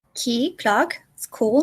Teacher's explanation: The k, which is voiceless.